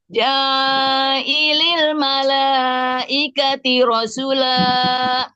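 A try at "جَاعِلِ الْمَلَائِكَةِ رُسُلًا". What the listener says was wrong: Ja'ilil malaikati rusula. Bukan ro.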